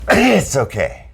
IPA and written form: ɪts oʊˈkeɪ (It’s okay)